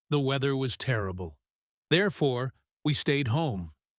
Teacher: They will say, "I was late because of the traffic." It might be very subtle, but it is there. When they use a big result signal like therefore, they will often slow down just a little bit and their voice will drop slightly. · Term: drop in the voice